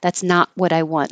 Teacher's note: If it's at the end, you won't hear it. Just hold the T and not release the air.